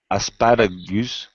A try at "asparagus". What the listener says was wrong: Okay, asparagus. The stressed syllable is the second syllable. The last syllable is unstressed, so it's very short. Asparagus. Gus. Just gus. Not goose, but asparagus.